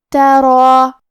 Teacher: ہمیں مد الف کو بھی تفخیم سے مطلب بھاری آواز میں پڑھنا ہے